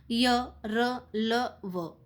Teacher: तो ये ऐसे व्यंजन होते हैं जो स्वर और व्यंजन के बीच में स्थित, उनके उच्चारण में जीवा मुख के किसी भाग का पूरी तरह स्पर्श नहीं करती। इनका उच्चारण जीभ, तालु, दांत, होठ के निकट आने से होता है, किंतु जो श्वास है, हमारी सांस है, उसमें रुकावट कम होती है, इसीलिए इनको अंतस्थ व्यंजन कहते हैं।